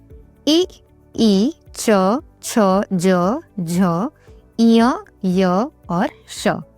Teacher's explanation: फिर है तालव्य यानी तालु से